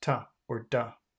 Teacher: two is a very long, inconvenient sound for such a common word. So it just becomes ta or da.